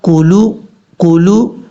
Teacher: یہاں پر یا کے بعد جو حمزہ ہے جھٹکی کے ساتھ پڑھا جائے گا، اور کاف کے بعد جو لام ہے اس چیز کا آپ نے خاص خیال کرنا ہے. لام کو مجہول نہیں پڑھنا